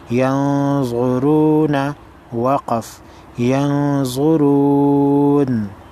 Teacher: نون ساکن ہے، اس کے بعد ضا ہے، نون ساکن کو غنہ کریں گے